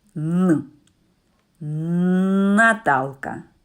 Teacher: при вимові звука н язик щільно притиснутий до верхніх зубів повітря натрапивши на перешкоду перед язиком і зубами проходить через ніс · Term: звук н